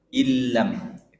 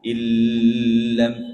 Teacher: lam itu idghamnya tidak ada gunnahnya, tidak ada dengung. Jadi jangan illam misalnya.